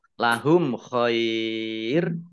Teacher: mim sukun bertemu dengan huruf Kho bacaan izhar syafawi dibaca jelas